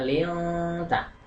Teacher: Kemudian untuk lafal yang ketiga lilta, ini disebut ikhfa hakiki karena nun mati bertemu ta. Ini nun mati bertemu dengan ta, membacanya samar dan dengung